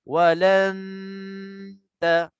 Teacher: Dengung dah masuk ke dalam ta. Dah disembunyikan ke dalam ta. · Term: ikhfa haqiqi